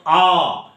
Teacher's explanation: জিভটা চোয়ালের দিকে নেবে আছে আর ওপরটা পুরোটাই ফাঁকা, ওটা বায়ু দ্বারা পূর্ণ না। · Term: বিবৃত